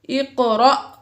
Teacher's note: اقرأ میں قاف حروف قلقلہ میں سے ساکن ہے، اس میں ہم نے قلقلہ ظاہر کیا اور حمزہ الف کے اوپر جزم آ گئی تو یہ حمزہ ہوا اور حمزہ ساکن ہے، الف کے اوپر جزم ہے لہٰذا حمزہ ساکن ہے اور حمزہ ساکنہ کو ہمیشہ جھٹکا دے کر پڑھتے ہیں۔